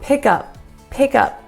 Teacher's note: you don't want a lot of air coming out it's going to be a stop